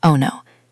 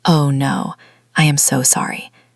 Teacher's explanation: It sounds like I want to check my phone. You need to put some air and some sadness into the vowel sounds.